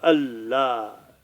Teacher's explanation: الف پر زبر ہے، لام پر تشدید ہے، تشدید 2 بار پڑھا جائے گا، لام 2 بار پڑھا جائے گا